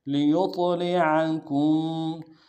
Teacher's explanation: کان اللہ، وما کان اللہ لیطلعکم، لام کو نون سے ادا کریں گے، یا کو طا کے ساتھ ملانا ہے، طا حروف قلقلہ سے قلقلہ کریں گے، اور طا موٹے حروف میں سے بھی موٹا کریں گے